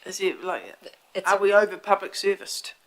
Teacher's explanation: it's a rising intonation it's a question it's not a statement